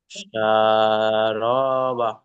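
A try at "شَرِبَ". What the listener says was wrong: র টান দেন কেন? এখানে তো এগুলো হারাকাত, হারাকাতে টান দেওয়া যাবে না।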